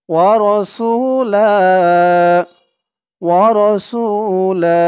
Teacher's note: ওয়াও জবর ওয়া, র জবর র, ওয়া র, সিন ওয়াও পেশ সু, ওয়া রাসু, ওয়া রাসু। লাম দুই জবর লান, এখানে শেষ, থামার কারণে লা এরকম হবে।